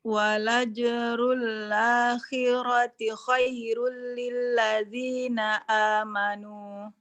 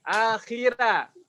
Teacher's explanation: Roknya masih terbaca tebal